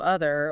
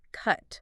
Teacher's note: Your jaw is probably a bit more open. The sound feels lower down. It has good length, good volume because it's stressed. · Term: upside down V